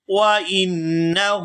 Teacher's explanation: یہاں نون مشدد پر غنہ کریں گے اور آگے ہا کے اوپر الٹا پیش ہے تو اس کو کھینچ کر ادا کیا جائے گا